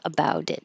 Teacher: And the final T, you just hold about it. I'm not crazy about it.